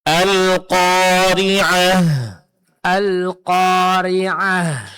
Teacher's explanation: Nah, jangan lupa berhenti pada huruf ta marbutoh, ganti ta marbutohnya menjadi huruf ha sukun. Nah, huruf ha dari segi sifatnya dia termasuk dalam kategori huruf hamas. Berarti dalam pengucapannya mesti keluar angin atau napas atau suara seperti bisikan.